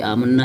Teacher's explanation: غنہ مشدد ہے، اس پر غنہ کریں گے